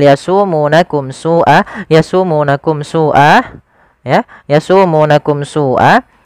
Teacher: Di sini ada bacaan izhar syafawi, yaitu adanya mim mati bertemu dengan huruf sin, maka dia harus dijelaskan suara mimnya. Yasumunakum su'a, tidak boleh yasumunakum su'a, tidak boleh ditahan, tapi dia dibaca dengan jelas suara mimnya.